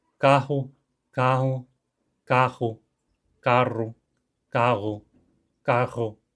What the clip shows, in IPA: kahʊ, kaɦʊ, kaxʊ, karʊ, kaʁʊ, kaʀʊ